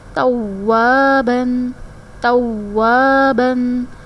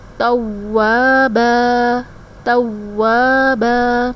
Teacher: آیت کمپلیٹ ہو رہی ہے تو ایک زبر جو ہے وہ سکپ ہو جائے گی